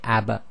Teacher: in order to complete the sound you have to release the two lips quickly and slightly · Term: the echo